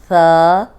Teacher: ثا کو نرم پڑھیں گے، سیٹی کی آواز نہیں آئے گی، اوپر سامنے والے جو 2 دانت ہیں ان کے اندرونی کنارے پہ زبان رکھ کے ادا کریں گے۔